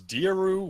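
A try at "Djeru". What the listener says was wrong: I don't know how to pronounce it, but I've always pronounced it Jeru. silent D, say the J.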